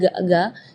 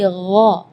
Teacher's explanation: Di ayat ini yang pertama di makhraj huruf ghain ya, ghairil maghdubi ya, perlu diperhatikan bukan G, bukan huruf G ya, bukan ga, tapi gha. Jadi kalau ga itu dia makhrajnya dari lidah. Ya, tapi kalau huruf ghain itu dari bagian tenggorokan